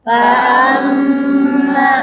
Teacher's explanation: Nah, ini ada gunnah lagi ya, gunnahnya di mim tasydid.